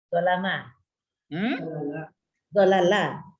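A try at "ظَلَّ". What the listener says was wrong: Jangan digabungkan saja lamnya. Jangan. Zolla gitu. Zolla. Itu ditambah diganda di tengah sama seperti balaga, fassara.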